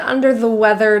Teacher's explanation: Both of these THs are voiced THs, and they require a bit of airflow.